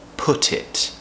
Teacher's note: I wouldn't put it past him. We're connecting put and it because put ends with a consonant, it begins with a vowel, so the T moves to the beginning of it. Put it. I wouldn't put it past him.